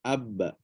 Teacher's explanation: Huruf ba yang sukun berqalqalah. Keluar bunyi dengan terpisahnya kedua-dua bibir. Bibir kena buka. Tapi tanpa menjauhkan kedua-dua rahang. Tanpa menjauhkan.